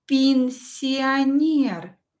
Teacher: Пенсионер. Е is not stressed. Pronounce it as И.